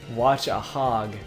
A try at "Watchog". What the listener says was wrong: watchog. No, you say it in like one like watchog. Yeah, it's like watchdogs, but without the spider tank.